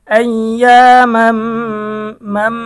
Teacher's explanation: তানবিনের পরে ঈদগামে বাগুন্নার হরফ মিম এসেছে, গুন্না সহ মিলিয়ে পড়তে হবে।